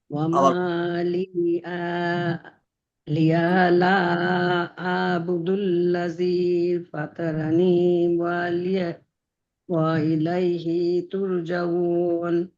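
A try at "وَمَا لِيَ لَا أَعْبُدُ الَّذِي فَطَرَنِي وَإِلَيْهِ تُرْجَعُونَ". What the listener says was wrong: হ্যাঁ, ঠিক আছে, ওখানে ওই লিয়া, ওখানে টানা যাবে না, লিয়া, লিয়া, লিয়া, হ্যাঁ লিয়া, লা আবুদুল্লাযী,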